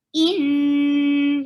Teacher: You're keeping the sound in your nose and you will give little time. In, and fatha is short. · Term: gunna